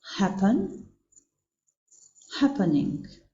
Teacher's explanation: Theksi bie tek rrokja e parë.